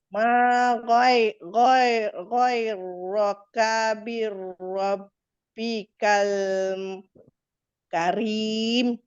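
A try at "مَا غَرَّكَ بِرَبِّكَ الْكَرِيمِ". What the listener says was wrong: Okey, sikit lagi kita betulkan. Okey, dia bukan ghoi. Masuk dekat ra yang ada sabdu. Ghor. Okey, kalau kita tuliskan dalam ejaan Melayu macam ni. Gharra. Ma gharraka. Itu sebutan huruf ghain. Gha. Masuk dekat ra ada sabdu sebab tu dia bunyi gharra.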